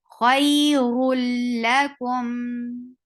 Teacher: We completely ignored the noon into it and we merged one sound into another.